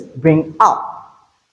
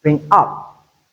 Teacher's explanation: the verb bring is unstressed whereas up is stressed